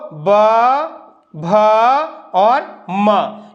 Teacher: इनके उच्चारण में जो है गर्जना होती है जब इनका उच्चारण करते हैं तो गर्जना होती है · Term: सघोष